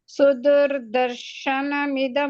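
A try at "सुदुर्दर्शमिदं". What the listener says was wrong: ದರ್ಶನ ಅಲ್ಲ ದರ್ಶಂ ಇದಂ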